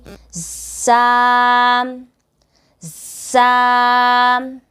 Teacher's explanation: را، زا کو تھوڑا سا کھینچیں گے۔ زا کو ادا کرتے وقت سیٹی کی طرح تیز آواز نکلے گی